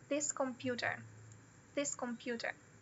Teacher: o computer vai ser o stressed e o this vai ser unstressed